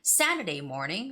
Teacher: Saturday morning, so the first word has to be stressed. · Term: compound noun